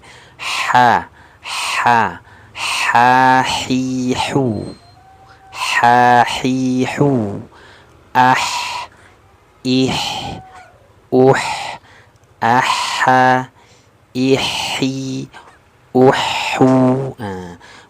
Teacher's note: makhrajnya dari tengah tenggorokan ya